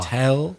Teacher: Strong on the second syllable.